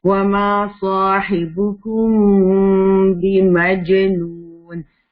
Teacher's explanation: تو یہاں اخفاء شفوی ہو رہا ہے, میم کو تھوڑا سا ہم چھپا کے پڑھ رہے ہیں